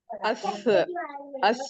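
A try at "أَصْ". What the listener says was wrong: नहीं, अस नहीं होगा, और स्वाद मोटा हो जाएगा, अलिफ मोटा नहीं होगा। अलिफ अलिफ मोटा नहीं होगा, सौद मोटा होगा। जबान उठाएगी। नहीं नहीं नहीं नहीं, सौद हैवी है ना, हैवीएस्ट है ना, तो क्या होगा, नहीं आप ये समझिए ना, दो चीज है इसके अंदर, ठीक है। ये हमजा हैवी है, लाइट है? लाइट है।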